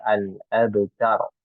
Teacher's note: Jadi ta-nya harus jelas dulu ya. Ta, kemudian ro-nya memang dia tebal ya. Ro-nya tebal, jadi kita membaca al-abtar ya.